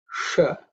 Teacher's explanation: this is the sh, which is with the tongue pointing upwards. It's a cerebral tongue position.